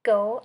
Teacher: hard G sound back of mouth